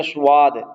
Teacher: ہم نے سواد نہیں پڑھنا، بلکہ ہم اس کو زبان کی جڑ کو تالو کی طرف اٹھا دیں گے تو یہ حرف موٹا ہو جائے گا۔ سواد پڑھیں گے تو واو آ جائے گی